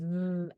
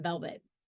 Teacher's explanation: with the lower lip lightly contacting the upper teeth to create a narrow passage for air flow however in this case the vocal chords vibrate adding voicing to